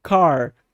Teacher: o R nos Estados Unidos, que é feito da forma retroflexa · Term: R retroflexo